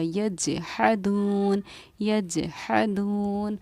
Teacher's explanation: حروف قلقلہ میں سے جیم آ رہا ہے، اس لیے ہم نے یہ جیم ساکن پر قلقلہ کیا اور آواز کو لوٹایا